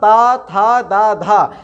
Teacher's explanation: तवर्ग होगा ये कहाँ से बोलेंगे? ये हम लोग दंत से बोलेंगे, अर्थात ता था दा धा, इनको यदि हमें बोलना है तो हमारी जो रसना है, जो हमारी जीभ है, उसे हमें ऊपर वाले दांत का जो भीतरी हिस्सा है उसमें स्पर्श करना पड़ता है।